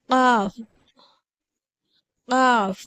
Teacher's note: காஃபுடைய மஹரஜ் பிறப்பிடம் நம்மளுடைய அடி நாவுடைய உயர்ந்த பகுதியிலிருந்து காஃப் என்ற எழுத்துடைய உச்சரிப்பு பிறக்கிறது.